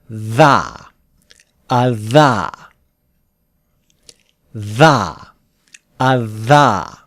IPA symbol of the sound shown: ð